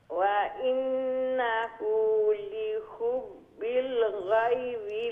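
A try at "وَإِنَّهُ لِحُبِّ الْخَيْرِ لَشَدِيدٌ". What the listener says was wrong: ও তো গাইরি শোনা যার খাইরি খাইরি খাইরি হ্যাঁ ও ও এখন জানান কইছেন খাইরি আর ওটারে মুঠা করবা বাট গাইনুল্লাহ খান উচ্চারণ করবা না বুঝছেন নি জি খা খা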